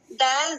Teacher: دال کو بھی تا کے جیسا اس زبان کے اس برابر اوپر کے دو دانتوں کے جڑ سے لگا کر پڑھا جاتا ہے